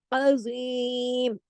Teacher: ज़ा को मोटा करके पूरा हक अदा करना है